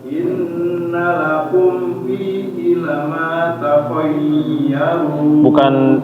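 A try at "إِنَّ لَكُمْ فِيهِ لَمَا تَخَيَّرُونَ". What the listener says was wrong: Bukan ditahan tapi ditekan. Takhayyarun,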